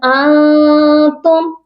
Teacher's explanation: اور دوسرا والا جو انتم، یہ والا نون ساکن ہے، اس پر اخفا ہوگا، چھپا ہوا غنہ کریں گے. ہم اس میں اپنی آواز کو ناک میں چھپا کر پڑھیں گے